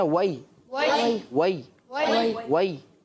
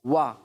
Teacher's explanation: जहाँ पर भी वाव पढ़ेंगे, होंठों को हमेशा गोल करके पढ़ेंगे, वरना वो फा की तरह लगेगा। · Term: होंठों को गोल करके